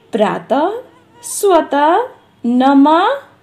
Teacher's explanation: इसका उच्चारण ह होता है, लेकिन हम लोग हिंदी में 2 बिंदु के रूप में इसका प्रयोग करते हैं। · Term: विसर्ग